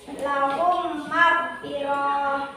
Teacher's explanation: dibaca memasukkan huruf mim ke dalam huruf mim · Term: Idgham mutamatsilin